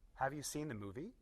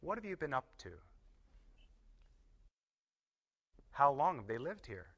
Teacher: This is connecting two words and dropping the sound of H.